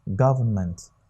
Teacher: the stress is on the first word syllable